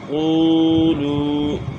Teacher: تو یہ ان میں واو مدہ ہے سب. واو ساکن سے پہلے پیش ہیں تو ان کو ہم نے تھوڑا سا کھینچ کے پڑھنا ہے. قاف واو پیش قو لام واو پیش لو قولو.